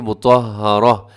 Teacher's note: مطہرۃ، لیکن اگر آپ نے وقف کرنا ہے تو آپ کیسے وقف کریں گے، مطہرہ، گول تا کو آپ ہا سے بدل دیں گے